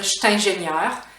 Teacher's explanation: So, the Je suis becomes cht